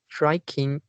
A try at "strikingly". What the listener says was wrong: Yeah, the second last, strikingly. Yeah, there is a ly behind. Strikingly.